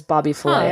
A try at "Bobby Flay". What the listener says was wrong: I feel like you're calling him Bobby Filet. like Flay. Not like filet-o-fish. Bobby Filet. Flay? Flay.